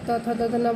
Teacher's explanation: त थ द ध न बोलेंगे तो आपका दांत टच करता है